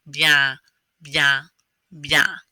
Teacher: There's those nasal ends again. Instead of getting your tongue to touch the roof of your mouth, you just kind of leave it hanging down at the bottom.